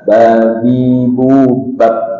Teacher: Kalau di huruf hijaiyah B, tidak ada angin. Termasuk suara yang ditahan juga